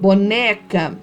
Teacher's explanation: a sílaba tônica é a penúltima sílaba